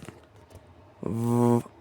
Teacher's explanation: it is a voiced labiodental fricative consonant. It is pronounced by placing the bottom edge of your top teeth gently against your lower lip, then force a stream of air through the small gap, creating a buzzing sound by vibrating your vocal cords.